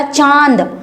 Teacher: चांद बोला तो ऐसा लगा जैसे नाक से आवाज आ रही है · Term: अनुनासिक